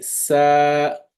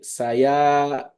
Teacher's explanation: The ya is there, but it's not pronounced. So that will be sa. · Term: ya mad